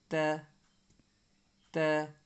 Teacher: یہ جو تا ہے یہ سامنے کے اوپر کے دو دانت کو زبان کی نوک لگاؤ تو یہ تا نکلتا ہے، بالکل نرم انداز سے تا۔